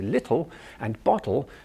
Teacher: our tongue is sitting forward on our gum Ridge almost touching our front teeth but not quite